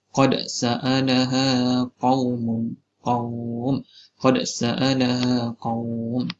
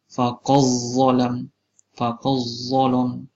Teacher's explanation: Kita cuba idghamkan pada huruf selepas qad, huruf dal tu diidghamkan pada huruf selepasnya.